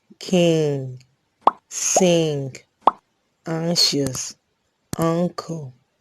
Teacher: we have the velar nasal sound